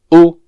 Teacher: This vowel sound is similar to the English U in a word like food, but pronounced with the tongue in the back of the mouth. The English U is pronounced with the tongue with its highest position very close to the middle of the mouth.